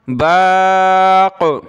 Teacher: قلقلہ بھی ہوگا اور قاف کو موٹا بھی کیا